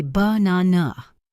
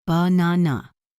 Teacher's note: The middle syllable is stressed, and the first and last are schwas. Banana. Now think about a sentence like, "I want a cup of coffee." The words a and of are not pronounced clearly.